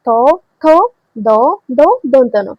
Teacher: এগুলো যখন উচ্চারণ করছেন তখন আপনার জীব দাঁতের সাথে লাগতেছে। যখন জীব দাঁতের সাথে লাগবে তখন এটাকে বলা হয় দন্ত ব্যঞ্জন।